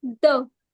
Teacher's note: The tip of the tongue is the active articulator but the upper front teeth are the passive articuls. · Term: dental